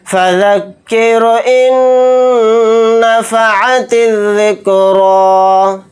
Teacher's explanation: ان نفعت، یہاں پر نون کے اوپر تشدید ہے تو یہاں پر ہم غنہ کر کے پڑھیں گے، تا کو ذال کے ساتھ ملا کر پڑھیں گے، الف لام نہیں پڑھے جائیں گے۔ را کو یہاں پر موٹا یعنی پر پڑھیں گے، اور را کے اوپر کھڑا زبر لگا کر ہی پڑھیں گے حالت وقف میں، یا نہیں پڑھا جائے گا۔